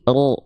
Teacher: Karena huruf ro ketika berharokat fathah harus dibaca dengan karakter yang tebal, dengan cara yang mufahomah, tafhim, tebal.